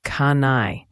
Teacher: The N connects directly to the I